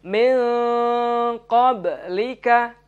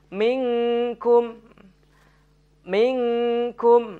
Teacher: nun sukun bertemu dengan huruf qaf harus dibaca dengan samar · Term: Ikhfa Haqiqi